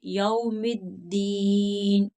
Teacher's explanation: یا کے آگے واو ہے، یا کے اوپر زبر ہے تو یہاں واو لین ہے، تو اس کو جلدی سے پڑھیں گے